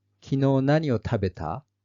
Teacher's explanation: question mark is added with the rising intonation in the end